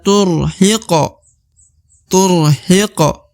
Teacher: di depan huruf Hi terdapat Q atau huruf q berharakat sukun maka huruf q harus dibaca pantul karena huruf Q adalah salah satu daripada huruf Qalqalah